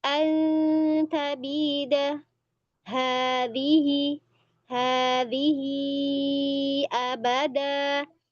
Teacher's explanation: Ikhfa ta dekat lagi di makhrajnya.